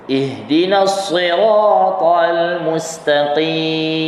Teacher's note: Contoh, kita sama-sama sebut ihdinas siratal mustaqim. Tebalkan sad kan, walaupun dia baris kasrah tetapi bunyi dia tu tetap kuat, kekal sifat kuat dia. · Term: huruf sad